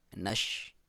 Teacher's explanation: زیر ہے تو یا مدہ ایک الف کے برابر لمبائی، نش، شین کو اس طرح ادا کریں کہ منہ میں آواز پھیل جائے